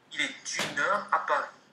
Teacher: Le T avec le U, enchaînement.